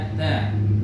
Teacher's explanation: makharijul huruf ta ini ujung lidah. Ujung lidah disentuhkan ke pangkal gigi seri